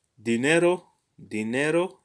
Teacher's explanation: the accent is on ne